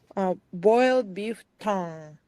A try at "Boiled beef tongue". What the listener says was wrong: Yeah, that's quite good.